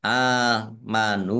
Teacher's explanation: Nun dumah wawu sukun, mat tobi'i. Dibaca panjang dua harokat.